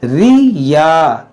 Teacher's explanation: या मुशद्दद है, इसको पढ़ना है 2 बार